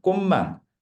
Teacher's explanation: 치읓이 음절의 끝에서 디귿이 되니까 음절의 끝소리 규칙. 음절의 끝소리 규칙이 일어나고 그 다음에 미음에 의해서 디귿이 니은으로 바뀌죠.